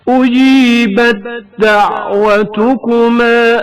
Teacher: تائے ساکن کا دال حرکت دار میں ادغام ہونا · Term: ادغام متجانسین